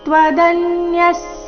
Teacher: ಶೇಷತಃ ತ್ವದನ್ಯಸ್ ದ ಮೇಲೆ ಆಘಾತ. ವಿಸರ್ಗದ ಉಚ್ಚಾರಣೆ ಅರ್ಧ ಸ ರೀತಿ.